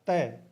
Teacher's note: तय बोल के देखोगे तो जीभ है वो दांतों को स्पर्श करती है